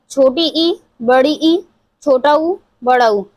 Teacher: जब हम इन चारों को उच्चारित करते हैं तो हमारा जो मुख है वो कम से कम खुलता है। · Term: संवृत स्वर